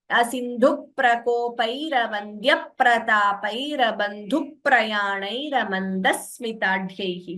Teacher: So please note how the P and S, whichever letter is there, is doubling. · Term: Dvitvams